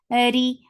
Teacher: Ra is light because there is kasra on it and the sound is short.